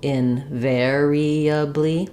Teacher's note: Invariably, with the stress on the ver syllable.